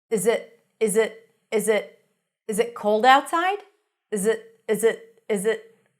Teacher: the it doesn't change much, but often it can be reduced to a schwa. A schwa is a very neutral vowel sound, and instead of I, you'll hear it.